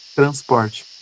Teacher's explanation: ele é um R chamado de TEP. É um R mais rápido, tá? A pronúncia é mais rápido, como por exemplo nas construções de sílabas em que o R aparece no meio dela. · Transporte é um R mais rápido, ele quase não aparece